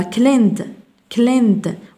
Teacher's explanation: وكأن الإي غير موجودة لا تنطق